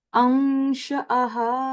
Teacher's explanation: a hidden noon sound for 2 seconds